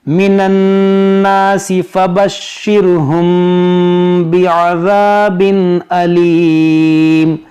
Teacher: تو یہاں پر ہے اخفاء شفوی، یعنی یہاں پر غنہ کریں گے۔